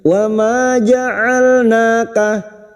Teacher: huruf ain wastul halqi, yaitu makhrajnya ada pada tengah tenggorokan